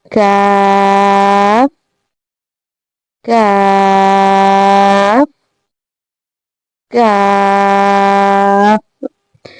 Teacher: you have to touch your back of the tongue with the soft palate